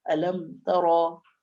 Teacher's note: جیسے سورۃ الفیل میں پہلی آیت ہے الم ترى، یہاں پر میم میں غنہ نہیں کریں گے، میم کو جلدی ظاہر کر کے پڑھیں گے